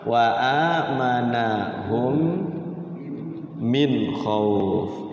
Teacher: cuman kerena mim itu adalah huruf apa namanya huruf bibir ya huruf dua bibir maka dia didengungkan ya didengungkan digunahkan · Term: mim sukun ketemu mim